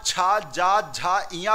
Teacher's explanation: जो आपकी जिव्या है वह आपके तालू पर स्पर्श करती है